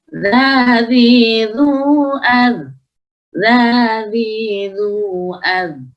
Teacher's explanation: Tidak ada desis sama sekali ketika pengucapan huruf dzal.